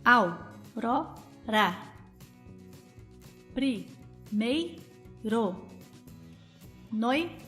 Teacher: dois sons vocálicos que se encontram na mesma sílaba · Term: ditongo